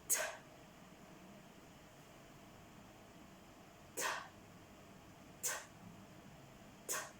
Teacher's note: T is done by blocking air with the tip of the tongue in the alveoli. T is a muffled sound.